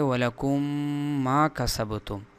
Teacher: ہے، لہٰذا ان دونوں میم کو غنہ کرتے ہوئے یعنی اس میم کو دوسرے میم میں گھسا کر اس دوسری میم کے اوپر شد لاتے ہوئے اس کو پڑھیں گے تو وَلَكُمْ مَا كَسَبْتُمْ، لیکن اس کے اندر غنہ بھی ہوگا